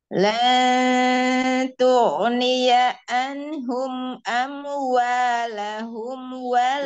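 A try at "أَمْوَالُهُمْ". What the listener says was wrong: Luhum sayang, luhum. Bukan lahum, luhum. Luhum Luhum.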